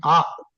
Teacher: అంటే అన్నాం కదా దాన్ని ఆ అంటే క్లియర్ గా గొంతులో నుంచి వస్తుంది. గొంతులో పుట్టేది అ అనే అక్షరం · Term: కంఠము